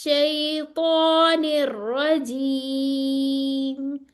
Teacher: और रॉ मुफखम है, ठीक है। शीन के आगे शीन के लिए होंठ आगे नहीं आएगी, श की आवाज नहीं आएगी। अगर मैं करूंगी ना शैतान, तो वो देखें कितना अजीब सी आवाज आई, शई शई।